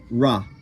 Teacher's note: a ra, which is cerebral, your tongue goes to the roof of the mouth